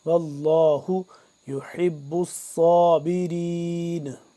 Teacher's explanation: صاد کو سین سے جدا کر کے اور صاد کو موٹا کر کے